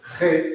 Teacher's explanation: G no sale de la boca sale de las cuerdas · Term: consonante Sonora